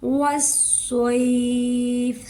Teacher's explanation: سواد کو پر کرنا ہے. یہ دیکھو جو گرین والے ہیں نا ہمارے حروف، ان کو ہم نے پر کر کے پڑھنا ہے، موٹا کر کے پڑھنا ہے.